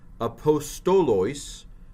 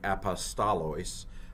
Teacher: Now I'm pronouncing the omicrons O. Some people pronounce them A. Even I've pronounced them A in class.